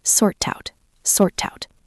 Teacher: Notice the T in sort connects to the out.